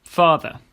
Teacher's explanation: at the end of a word, it’s a soft ‘uh’, just like in English.